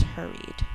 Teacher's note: In this word, we hear the R twice for spelling, but in normal speech, we would only hear it once.